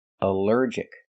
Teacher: Here the ALL is not pronounced all, but pronounced like in cup and up, because it's not stressed.